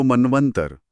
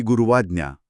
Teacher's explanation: जर आपण उ आणि अ वेगाने उच्चारले तर व ध्वनी तयार होतो